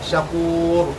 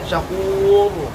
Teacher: tafkhimnya kurang, rohnya kurang tebal. Misalnya syakur cuma begitu, mestinya syakur lebih tebal ya.